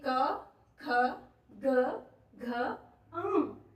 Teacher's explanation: यानी कि गला। तो जब हम इन वाले पांच व्यंजनों का उच्चारण करेंगे तो जो आवाज है जो ध्वनि है वो कहां से प्रकट होगी? हमारे गले से। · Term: क वर्ग